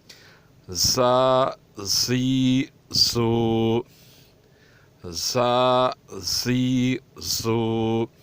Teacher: زا، زی، زو کی مخرج سخت اور پتلی ہے۔ اس طرح ادا کی جائے کہ تھوڑی سی سیٹی کی آواز نکلے تو یہ زیادہ اچھا ہے